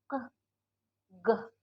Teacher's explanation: yang lidah paling belakang, lidah belakang kita. Keh, geh, bukan yang depan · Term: velar konsonan